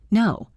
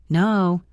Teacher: English vowels move. The word no is not a static sound. It moves from O to U, no W.